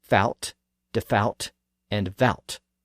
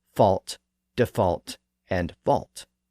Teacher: And after that spelling change, English speakers actually started to pronounce that L. And the vowel sound also shifted slightly from the ow sound to the aw sound.